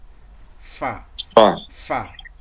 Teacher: এই যে দেখেন এখানে দেখানো আছে যে এই যে এই দুটো হলো দাঁত, এই দাঁত আর এই যে পেট, এই পেটটাকে সবুজ করে দেখানো আছে, পেটের সাথে আগাটা ঠেকিয়ে দিবেন, হয়ে যাবে কি ফা। আর বাতাসটা দিক দিয়ে একটু বের হবে